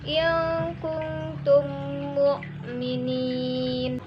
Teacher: Terjadi apabila mim sukun bertemu dengan mim yang sejenis. Cara membacanya dengan cara menyuarakan mim rangkap atau bertasdid dan wajib didengung. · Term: idgham mimi